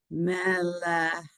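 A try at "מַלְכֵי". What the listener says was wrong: of all, get the vowel. It's an ah. So mal, and the 2 dots is an A, a long A. So mal. Okay, it's malche.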